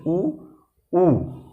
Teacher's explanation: होठ को गोल करना पड़ रहा है, इसलिए इनको ओष्ठ वर्ग में रखा गया है